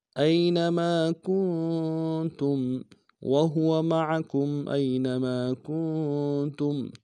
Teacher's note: کاف کو نون ساکن کے ساتھ ملانا ہے، غنہ کریں گے